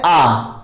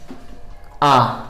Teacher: Open का मतलब होता है जैसे आ, आप लोगों ने देखा कि इसमें मुंह पूरा खुल रहा है, आ, विवृत हो गया ये।